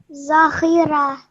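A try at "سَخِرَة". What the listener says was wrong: Okay, remember this is sa, seen with a fatha, sa. So sakhira.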